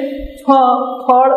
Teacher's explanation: ફ ફળ શબ્દ છે, ફળ શબ્દ ગુજરાતીમાં નથી, ફળ શબ્દ છે. એટલે ફ ગુજરાતીમાં ઔષ્ઠ્ય ઉચ્ચાર છે